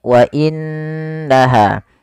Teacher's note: Apabila ada nun berharakat tasydid kita hukumi dengan bacaan gunah yaitu suara nunnya kita tahan dengan sepanjang dua harakat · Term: gunnah